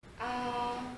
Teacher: A au premier ton, c'est haut et plat. A. Imaginez vous allez au dentiste et il vous demande d'ouvrir la bouche.